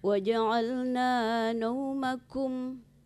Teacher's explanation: Kum itu jangan ditebalkan. Kum itu bukan ko ya. Tadi diucapkan huruf ko.